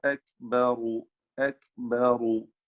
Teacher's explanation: കാഫ് ഷദീദും മഹ്മൂസുമാണ്